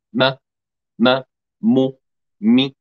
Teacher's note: مخرج الميم بانطباق الشفتين ويصاحب ذلك غنة من الخيشوم